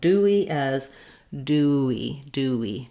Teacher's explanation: Just allowing your mouth, your voice to stay on, your mouth to move from the oo to the e position. That glide will happen naturally, dewy. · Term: w rounded glide